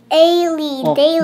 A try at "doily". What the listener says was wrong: No, it's a letter O and the I. The sound is oi.